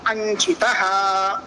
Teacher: All the 5 letters are Savarnas to Chakara. Hence, Anuswara is a nasal sound. That's why Nyakara will be replacing Anuswara.